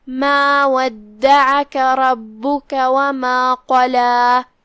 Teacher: وما قلا، یہاں کلمت قلا میں یہاں حرف القاف ہے، قاف کی ادائیگی زبان کے جڑ اور تالوں کے نرم حصے سے ہے اور قاف حروف تفخیم میں سے بھی ہے، لہذا اسے بھاری آواز میں پڑھنا ہے۔